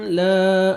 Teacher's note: الف مدہ 1 سیکنڈ لام کو کھینچنا ہے